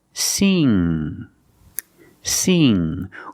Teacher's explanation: The tongue position is different. Put the back of the tongue against the back of the roof of your mouth, like this. So the back of the tongue is up, touching the roof of the mouth, but in the back. And then you make a sound. It's kind of a nasal sound.